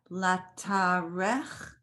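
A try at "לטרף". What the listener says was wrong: That's an F again.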